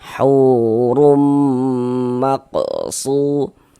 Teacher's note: Hurum, huruf ra memiliki harokat dhammah atau di sini dhammatain. Itu huruf ra kita baca tebal nih, kita baca tafkhim ya